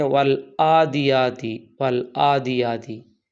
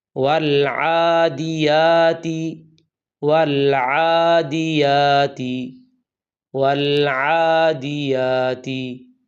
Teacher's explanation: سب سے پہلی غلطی یہ ہے، بعض لوگ عین کی جگہ حمزہ پڑھتے ہیں اور پڑھتے ہیں والعادیاتی والعادیاتی۔ یہ عین ہے، اس کا مخرج وسط حلق یعنی گلے کا درمیان ہے، اسے حمزہ نہیں پڑھنا